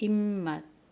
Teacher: 비읍이 비읍이 미음으로 바뀌는 거